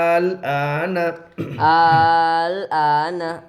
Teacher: حمزہ لام کھڑا زبر مد آل, حمزہ کھڑا زبر آ, آل آ, نون زبر نا, الآن. حرف مد کے بعد والے حرف پر جزم ہے اس لیے مد لازم ہوگا